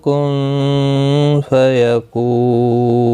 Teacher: وقف بالاسکان ہوگا، مد العارض وقفی ہوگا، 3 سے 5 الف کی مقدار کے برابر کھینچ کر وقف کریں گے۔